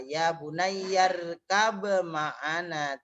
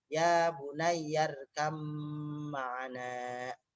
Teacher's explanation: Dari dua bibir, syafatain. Nah, syafatain ba mim, cuman beda sifatnya. Tidak dibaca qalqalah. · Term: idgham mutajanisen